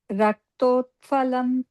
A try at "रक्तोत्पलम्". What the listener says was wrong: Raktotpalam. also many make the mistake of making this the Mahaprana sound, but this is Raktotpalam only.